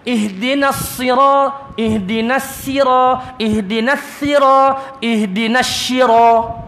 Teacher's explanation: ihdinas sirat sebab sad di safir, sifat sad ni safir, dia ada desiran.